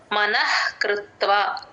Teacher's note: ఆ మన కి హ ని జాయిన్ చేసి మనః అని అలా గాలి బయటకి వదలాలి మనః కృత్వ కృ తేల్చి చెప్పాలి త కింద వ ఒత్తుని ఉంది కాబట్టి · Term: విసర్గ హెచ్ సౌండ్